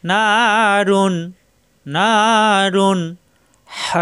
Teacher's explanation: তানবিনের পরে আসছে হা অর্থাৎ ইজারের হরফ স্পষ্ট পড়তে হবে কোন গুন্না হবে না